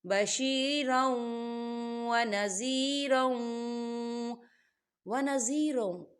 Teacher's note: واو حروف یرملون میں سے ہے، تو یہاں پر ادغام ہوگا